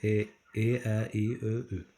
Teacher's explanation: Bunların içərisində Ö ilə Ü dodaqlanırlar. Ə, İ isə dodaqlanmır. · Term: incə saitlərimiz